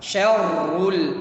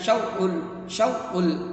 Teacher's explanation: sifat huruf ra itu adalah tikrar. Dia harus punya getaran.